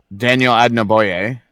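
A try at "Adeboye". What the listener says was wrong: It's not Adnaboye. There's no N. I think it's Adababoye. I believe that's what it is. Adababoye.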